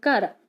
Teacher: ਕੱਕੇ ਦੀ ਆਵਾਜ਼ ਆਉਂਦੀ ਹੈ ਤੇ ਨਾਲ ਨੀਵੀਂ ਸੁਰ ਆਉਂਦੀ ਹੈ